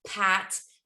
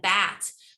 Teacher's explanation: that voiceless phoneme at the beginning of pat versus the voiced phoneme at the beginning of bat